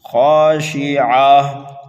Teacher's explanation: را کو بھی موٹا کر کے پڑھیں گے، ہا کو کھینچ کر کے پڑھیں گے ایک الف کے برابر۔ ابصارها، خا کو موٹا پڑھنا ہے، ایک الف کے برابر کھینچ کر کے پڑھنا ہے